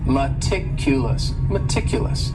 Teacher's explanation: this word has four syllables and the stress is on that second syllable meticulous meticulous that first syllable also has that schah that uh